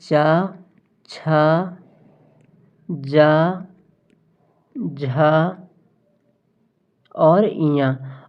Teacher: च वर्ग में आते हैं च छ ज झा और या और यह ऐसे वर्ग हैं जिनका उच्चारण स्थान तालू होता है इसलिए च वर्ग को हम तालव्य वर्ग कहते हैं तो सही